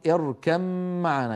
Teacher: يدغمون الباء في الميم، يعني يحولون الباء إلى ميم وينطقون ميما مشددة. لو وقفوا على الأولى يقولون اركب بباء ساكنة مقلقلة، لو وصلوا يدغمون. · اركب معنا. اركب، الباء من الشفتين والميم في معنى أيضا من الشفتين، فالباء شفوية والميم شفوية